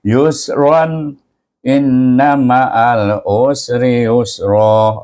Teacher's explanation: bila sambung kena zahirkan bunyi Ran tanwin itu iaitu yang selari menunjukkan dia dibaca dengan ya dengan izaran ya · Kadang-kadang orang sambung kat sini. Bila sambung, kena zahirkan bunyi ran tanwin itu. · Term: izah